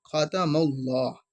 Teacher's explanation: میم پر زبر یا پیش ہو تو ہم نے لام کو پر کر کے پڑھتے ہیں